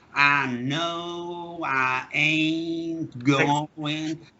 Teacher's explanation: the way they speak in the deep south of America, with the very long vowels